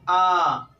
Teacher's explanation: जब आप बड़ा आ कहते हैं आ, तो ये मध्य भाग से बोला जाता है बड़ा आ, ये ध्यान रखिएगा।